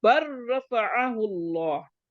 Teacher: बा के बाद रा पे जाएंगे, लाम को छोड़ देंगे